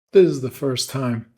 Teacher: you can hear I'm cutting out the S in the word this.